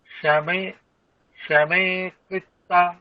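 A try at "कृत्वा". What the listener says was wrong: আচ্ছা দেখুন, সুখ দুঃখে সমে কৃত্বা, হ্যাঁ তয়বায়ের উচ্চারণটা আরো স্পষ্ট করতে হবে, ত্বা, কৃত্বা, হ্যাঁ কৃত্বা।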